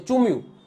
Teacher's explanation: અનુસ્વાર છે એ અનુસ્વાર બોલાતો નથી